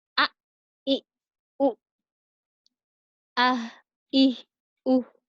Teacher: Tenggorokan di pangkal tenggorokan ada huruf hamzah dan huruf ha